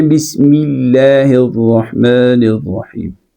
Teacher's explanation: لفظ اللہ سے پہلے میم ہے اور میم کے نیچے زیر ہے، تو اس زیر کی وجہ سے آپ نے اس کو باریک پڑھنا ہے